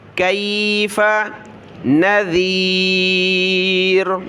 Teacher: ذال پر زبان نکالی